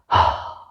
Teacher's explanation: अभी को होता है हा, कंठ से, अब इसलिए हा, कंठ द्वारा, ग्रोटल से, हा, ऊष्म व्यंजन है, उसमें भी निकले, और काकल्य है, मतलब कंठ के और आगे से निकल रही है। कंठ के आगे मतलब जहाँ द्वार है, कंठ शुरू होता है, वहाँ से हा।